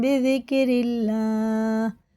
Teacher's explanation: اللہ کا لام زیر سے تو باریک پڑھیں گے